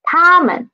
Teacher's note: it is a neutral tone, so we need to read it soft and quick